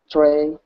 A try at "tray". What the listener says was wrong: I know, the T makes it hard. Tighten up the R. Tray.